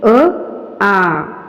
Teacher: अ च्या नंतर आ चा उच्चार हा त्याच उच्चार स्थानातून निघतो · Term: सजातीय स्वर